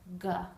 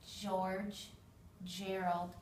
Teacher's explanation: the G makes a softer sound it's not the G sound it's the J